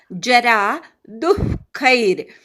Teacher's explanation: दूच्या विसर्गाचा अर्धा उच्चार करायचा. खई नंतर रफाराचा उच्चार करायचा.